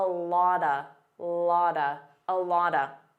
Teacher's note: A lot of becomes a lotta